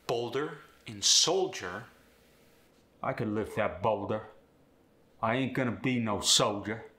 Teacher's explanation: the medial L changes to a w sound when it follows a vow but not when it's between two